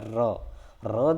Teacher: हमारी जीवा होती है उसका आगे का भाग वो ऊपर लगता है बोलते समय, और एक थरथराहट, एक कंपाहट होती है। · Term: लुंठित